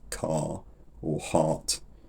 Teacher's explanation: people with accents like mine don't pronounce the r sound in words like car or heart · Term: R loss